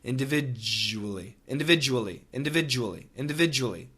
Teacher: the DU we get that J it's a j sound and the J is vibrated ch ch actually eventually virtually no vibration in the CH individually